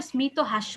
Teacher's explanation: শব্দের শুরুতে মফলা উচ্চারণ করছে